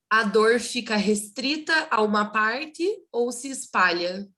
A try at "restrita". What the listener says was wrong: Yes, but you pronounced restrita without R. You said it restrita. Is it right, or we can say it restrita with R? Restrita.